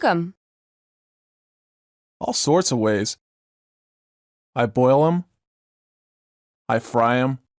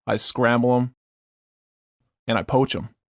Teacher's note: the silent th of the pronoun them